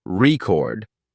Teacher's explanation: record it's a noun like in I bought a record but when the stress is on the second syllable record it becomes a verb